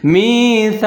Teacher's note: آگے سا ہے، اس کو سا پڑھنا ہے، اس کو سین نہیں پڑھنا، سیٹی نہیں بجانی